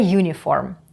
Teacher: перша літера ю передає два звуки й у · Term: звук приголосний